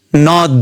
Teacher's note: जस्तै हामी नेपालीमा हेरौ नदी नदीमा दुई शब्द खण्ड छन् मतलब दुई वटा अक्षर वा सिल्बस न र दि यसमा पहिलो सिलबलमा तुलनात्मक रुपमा बढी जोड वा बल पर्छ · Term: बलाघात